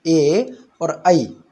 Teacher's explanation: इसके बाद सूत्र आता है ए दैतौः कंठ तालु, अर्थात ए और ऐ, ये जो 2 वर्ण हैं, स्वर जिनको हम कहते हैं ए और ऐ, इनका जो उच्चारण स्थान है वो कंठ और तालु है। क्योंकि इनकी जो उत्पत्ति हुई है, ये जो संयुक्त स्वर कहे जाते हैं, ये आ और ई इन दोनों के मिलने से बने हैं।